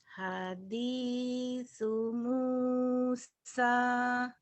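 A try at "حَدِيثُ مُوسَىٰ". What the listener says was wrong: Hadithu. Sanya cedal. Hadithu Musa. Sanya sin biasa. Ya, hadithu Musa.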